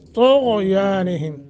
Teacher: ता ग़ाइन दोनों मोटे करने , तुग़यानिहिम कर, गैन को भी मोटा करें पता चले तुग़यानिहिम